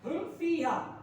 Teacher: میم ساکن کے بعد با اور میم کے علاوہ کوئی حرف آ جائے تو میم ساکن میں اظہار شفوی ہوگا، یعنی گننا نہیں کریں گے، ایسے ہی پڑھ دیں گے۔